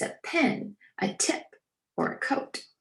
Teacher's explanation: they're pronounced with a gentle puff of air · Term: air puff sounds